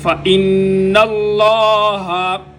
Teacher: نون مشدد اور مین مشدد ان کے اوپر غنہ ہوتا ہے، یہاں پر نون مشدد ہے، یہاں پر غنہ۔ · لفظ اللہ کا لام موٹا ہوگا کیونکہ لفظ اللہ کے لام سے پہلے زبر ہے